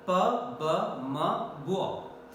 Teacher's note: Bilabial because 2 lips are coming in contact against each other. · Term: bilabial consonants